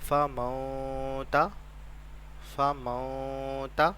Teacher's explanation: نون کی آواز کو اپنی ناک میں چھپائیں گے، اسے کہتے ہیں غنہ